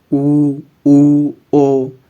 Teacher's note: ऐसे स्वर जिन्हें बोलते समय होठ गोल हो जाते हैं वर्ताकार स्वर कहलाते हैं। जैसे आपको उच्चारण करके बताते हैं, ऊ ओ।